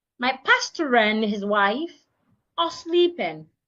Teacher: pastor ends with letter R. The next word starts with a vowel. Because of that I should link both. So pastor and becomes one word.